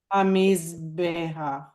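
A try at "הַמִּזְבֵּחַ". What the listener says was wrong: And then that's the furtive patach. So it's pronounced before the chet. Hamizbeach.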